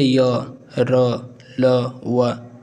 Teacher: व्यंजन की बात करें तो या सघोष होते हैं और अल्पप्राण सघोष यानी कि इनको बोलने पर क्या होता है हमारी स्वर तंत्रों में कंपन होता है और अल्पप्राण मतलब मुख से हमारे कम हवा निकलता है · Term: अंतस्थ व्यंजन